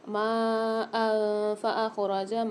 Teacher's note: دو زبر کی تنوین کے بعد افعال غنہ والا قاعدہ آ گیا کہ یہاں پر فا آ رہا ہے 15 حروفوں میں سے تو یہاں پر ہم غنہ کر کے پڑھیں گے